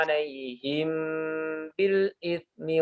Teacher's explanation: Ikhfa syafawi ya. Bacanya dengungnya ditahan.